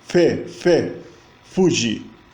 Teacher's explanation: O japonês não tem nenhum, ele tem só o E, o W, né? E o som que é grafado como F, na verdade, é uma fricativa bilabial.